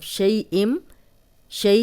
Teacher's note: شئی جو ہے وہ یائلین ہے، جزم والی یا، پیچھے زبر شین پہ، تو بغیر کھینچے نرمی سے پڑھیں گے